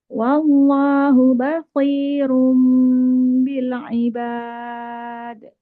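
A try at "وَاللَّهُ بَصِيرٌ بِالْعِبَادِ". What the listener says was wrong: Mana kolkolahnya?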